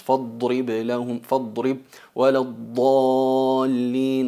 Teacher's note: Notáis que se llena la boca también de aire con la presión que ejercemos con las muelas y los bordes de la lengua, pero también se alarga tanto el sonido hasta llegar a acercarse a otro punto de articulación, por eso se llama al-istitala